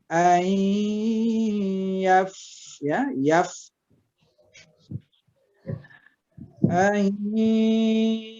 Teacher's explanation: Yaf itu mahmus, fa-nya termasuk huruf mahmus, jadi membacanya harus napas kita berhembus.